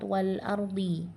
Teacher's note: Lamnya masih tetap dibaca jelas, maka dia dibaca izhar. Namanya adalah izhar qamari. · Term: idhar qamari